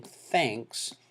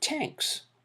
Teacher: consonant clusters for most students to master it's very difficult so instead of saying thanks it can be simplified to tanks